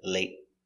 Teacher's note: T, not late, but late. Stop the air, late.